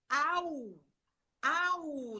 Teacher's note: eu saio de um fonema aberto para um segundo fonema fechado. E eu faço au.